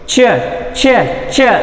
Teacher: Hard ಪ್ಯಾಲೆಟ್ ಮತ್ತು ನಮ್ಮದು blade of the tongue touch ಆಗದಲೇ ಅಲ್ಲಿ ಸೌಂಡ್ಸ್ ಬರುತ್ತೆ ನೋಡಿ. ಚ ಚ ಚ ಇಲ್ಲಿ ನಾವು ಟೀತ್ ರಿಜ್ಜಿಗೆ ಹೋಗಲ್ಲ, ಅದು ಚ ಸೌಂಡ್.